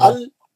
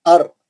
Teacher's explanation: लाम के लिए पीछे आ रही जबान, रा के लिए आगे जा रही , लाम के लिए पीछे जा रही, रा के लिए सामने